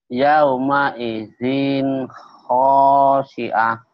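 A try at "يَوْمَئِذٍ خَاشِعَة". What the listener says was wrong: Zinnya idhar. Kan saya bilang, Pak, ujungnya jangan ada haknya, Pak. Iya, emang kalau berhenti kenapa? Emang kenapa tak marbuto?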